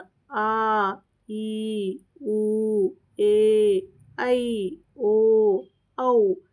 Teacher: ಎರಡು ಮಾತ್ರಾ ಕಾಲದಲ್ಲಿ ಎರಡು ಮಾತ್ರೆ ಅಂದ್ರೆ ಸ್ವಲ್ಪ ಜಾಸ್ತಿ ಸಮಯವನ್ನ ತೆಗೆದುಕೊಳ್ಳುತ್ತವೆ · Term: ದೀರ್ಘ ಸ್ವರ